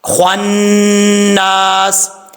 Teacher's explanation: خا حروف مستعلیہ میں سے ہے، پر پڑھا جائے گا